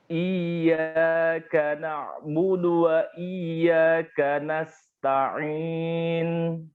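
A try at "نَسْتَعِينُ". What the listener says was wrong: Masih dari hidung. Nasta'in. Nah, nunnya jangan nasta'in. Nunnya begitu.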